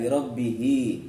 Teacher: Ha berharkat kasrah berdiri, itu namanya contoh dari mad silah qasirah, panjang 2 harokat.